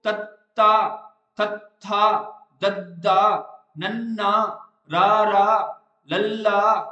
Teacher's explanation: ਤਾਂ ਕਹਿੰਦਾ ਜਦੋਂ ਇਹ ਧੁਨੀਆਂ ਆਪਾਂ ਉਚਾਰਾਂਗੇ, ਜਿਹੜੀ ਜੀਭ ਦੀ ਨੋਕ ਹੈਗੀ ਨਾ, ਉੱਪਰਲੇ ਦੰਦਾਂ ਦੇ ਪਿਛਲੇ ਪਾਸੇ ਰੁਕ ਜਾਂਦੀ ਹੈ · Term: ਦੰਤੀ